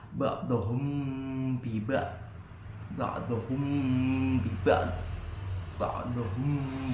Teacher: ketika Hum Mim mati ketemu dengan ba maka mim tersebut dimasukkan pada ba · bertemu dengan huruf ba di lain kalimat dengan menempelkan kedua bibir dengan dengung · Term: ikhfa